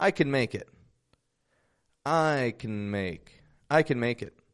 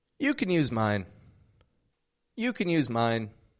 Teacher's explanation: ability we reduce it to a super quick kind of sound when can's reduced it's connected to the words before and after it so for example I can make it I can make I · when can is the helping verb in a sentence not the main verb but rather expressing an ability we reduce it to a super quick kind of sound when can's reduced it's connected to the words before and after